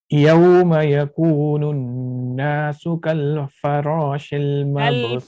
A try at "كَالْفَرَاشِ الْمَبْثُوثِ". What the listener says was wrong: كالفراش. Don't stop and don't do قلقلة. كالفراش. كالفراش المبثوث.